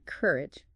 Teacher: Stress on the first syllable sounds like courage, not cur e.